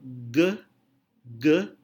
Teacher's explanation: udara terhalang oleh posisi lidah yang terangkat dalam hal ge ge udara terhalang oleh bagian belakang lidah